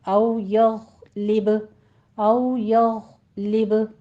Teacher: यग़ गैन को पुर पढ़ते हुए स्टॉप कर दीजिए। लिब में कलकला करना है।